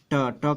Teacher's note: जैसे हम लोग ट का उच्चारण करें, ट कहेंगे हम लोग, तो ट जब हम लोग कहेंगे तो जो जिह्वा होगी वह न तो दांत को स्पर्श करेगी न तो तालु को स्पर्श करेगी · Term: मूर्धा